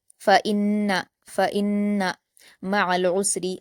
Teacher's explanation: نون مشدد ہے تو غنہ کے ساتھ بھی پڑھا جائے گا، لیکن یہاں خیال رکھنا ہے کہ نون پر صرف حرکت ہے اس لیے ہم اس کو جلد پڑھیں گے۔